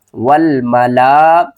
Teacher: اور یہاں پر بڑی مد ہے، اس کو ہم 5 الف کی مقدار کھینچ کر پڑھیں گے، واو کو لام سے ملائیں گے، اس الف کو نہیں پڑھیں گے